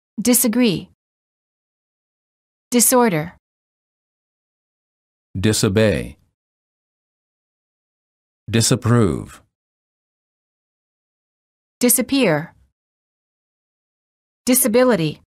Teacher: Warning, common mistake. The S in the prefix dis is pronounced as s and not as z.